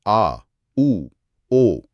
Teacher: पश्च, जब जीभ पीछे की तरफ जाए, जैसे आ, ऊ, ओ।